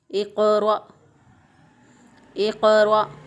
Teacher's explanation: इक़रा इक़रा क़ाफ़ जो है इस पे क़लक़ला होगा क्योंकि क़ाफ़ जो है ये मोटे हरूफ में से है और ये साकिन है। तो साकिन हालत में क़ाफ़ पर क़लक़ला होता है।